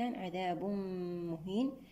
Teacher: التنوين مع الميم إدغام بغنة كاملة